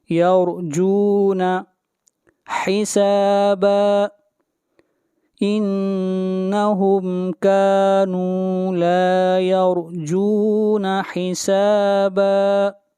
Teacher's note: را کو موٹا پڑھیں گے، را سے پہلے زبر ہے